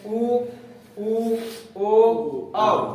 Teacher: जिन स्वरों के उच्चारण में हमारे होठ की स्थिति गोलाकार होती है उन्हें वृत्तमुखी स्वर कहते हैं।